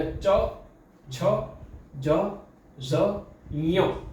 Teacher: હવે આ કંઠથી બોલાય છે ને એવી રીતે આ ચ વર્ગ એ તાલુથી બોલાય છે. તમારી જીભ જ્યાં ચ બોલતા જ્યાં તાળવે અડે છે ને એને કહેવાય છે તાલુ. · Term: તાલવ્ય